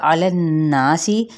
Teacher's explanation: سین کی زیر کو واضح طور پر ادا کرنا ہے، سین پہ سیٹی کو بھی واضح کرنا ہے